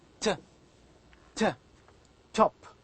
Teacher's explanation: When you pronounce t, you can feel that the front part of the tongue touches the area which is behind the upper front teeth, alveolar ridge. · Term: alveolars